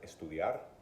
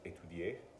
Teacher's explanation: insert a vowel before the initial sta sound